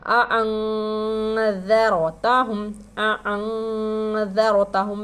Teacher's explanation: اخفا کر کے پڑھیں گے، آواز کو چھپا کر پڑھیں گے. اَأَنذَرْ را کے پر جزم ہے، رائے ساکنہ ہو گیا.